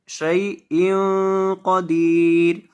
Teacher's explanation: इन की तनवीन के ऊपर यहाँ आपने गुन्ना करके पढ़ना है